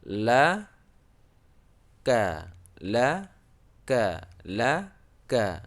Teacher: tempat bacanya itu pangkal lidah dengan langit-langit di depan makhraj huruf lam sedikit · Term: huruf Kaf